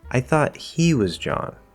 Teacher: he which is usually not stressed it's becoming the focus okay we're emphasizing it as well we're contrasting i thought this · So now we're getting he, which is usually not stressed. It's becoming the focus.